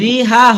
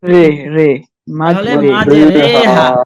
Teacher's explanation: এখানে লেখা আছে মাঝে রিহা, কিন্তু এই রিহা হবে না, এটাকে একটু রেহা হবে। অ্যাঙ্গেলে পড়তে হবে, একারের মতো, রেহা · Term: এমালা